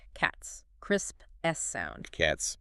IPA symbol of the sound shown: s